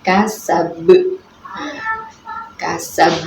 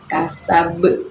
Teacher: Di sini yaitu huruf ba. Huruf ba-nya itu kan tadinya kan berharokat fathah ya, kasaba ini. Tetapi karena berada di akhir ayat, maka dibaca wakof, akhirnya menjadi kasab ya. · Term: qolqolah kubro